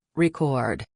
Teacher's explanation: When you're talking about the act of making a recording, the stress is on the second syllable, record. But if you're talking about a vinyl record, the stress is on the first syllable, record. Small differences, big impact.